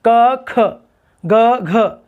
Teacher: क में हवा कम है, ख में हवा ज़्यादा है, फिर ग से घमले वाले में हवा कम है, घड़ी वाले में हवा ज़्यादा है, और फिर अंतिम वर्ण हुं बोल रहे हैं उसमें फिर से हवा कम हो रही है।